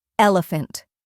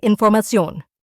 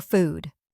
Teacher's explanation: The F sound is made by pressing the bottom lip against the top teeth and pushing air through the mouth. It is a voiceless sound, meaning that the vocal cords do not vibrate when producing it.